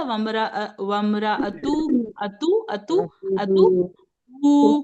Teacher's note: हु पे उल्टा पेश है, 2 हरकत खींचेंगे हम इसे, अगर मिला के पढ़ेंगे।